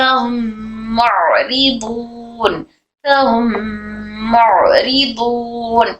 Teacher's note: मीम साकिन के बाद फिर मीम आया तो यहाँ पर भी गुन्ना करेंगे, इदगाम शफवी का हो रहा।